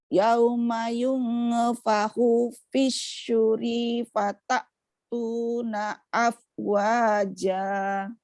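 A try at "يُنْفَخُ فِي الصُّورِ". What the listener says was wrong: Yungnya hati-hati, jangan sampai ada bunyi baru. Yung fahu, yang dimaksud bunyi baru gini. Yung ada bunyi nge-nya. Yung fahu fisuri harus bersih.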